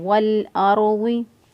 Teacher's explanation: लाम साकिन जो है वो पीछे वाला मुतहर्रिक हरफ यानी वाव के साथ मिला, तो वल अर्ज़ि रॉ साकिन, रॉ साकिन से पहले वाले हरफ पर ज़बर है इसलिए रॉ को पुर पढ़ेंगे